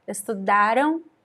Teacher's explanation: So M-A sounds like ma, but you place the letter M at the end of a word, like here, estudaram, there's no M sound at all